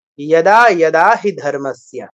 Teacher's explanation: অন্তঃস্থ ইয় আছে একটা সংস্কৃতে, অন্তঃস্থ জটা নেই।